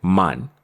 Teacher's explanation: The common misconception when some people hear this word at full speed is that we are saying mon with an O but that is incorrect